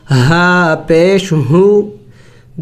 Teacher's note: حروف حلقی میں سے ہے، حلق کے آخری حصے سے ہم ادا کریں گے اس کو